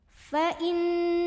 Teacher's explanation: Ada gunnah musyaddadah karena ada nun yang bertasydid. Cara membacanya, nun didengungkan, ditahan kurang lebih 2 harokat.